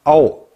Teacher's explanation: 아래야는 발음을 할 때 우리가 아와 오의 중간음이라 하잖아